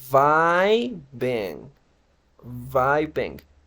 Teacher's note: la primera I se pronuncia como a vai vai y la segunda I se pronuncia más como una I normal o como una e